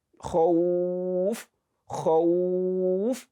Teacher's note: So that imaginary sukun you are giving to it will make you elongate that madu more than what is primarily the length of the elongation. So you elongate it more than the normal length because you are stopping on that faf and you are giving it an imaginary sukun. وَآمَنَهُمْ مِنْ خَوْفٍ khawf.